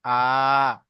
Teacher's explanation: আলিফ মাদ্দাকে যেমন এক আলিফ টান দিয়ে পড়েছি, খাড়া জাবারকেও তেমন আমরা এক আলিফ পরিমাণ টান দিয়ে পড়বো